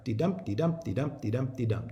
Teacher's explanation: 10 syllables alternating stress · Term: iambic pentameter